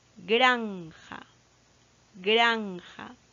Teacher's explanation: no se ve granja granja su acento es pro sódico y la sílaba tónica está en gran la penúltima sílaba